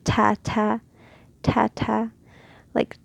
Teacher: It's very sharp sound. It's very quick. It has a strength, which is the stopping of sound. So that's where its sharpness comes from, I guess.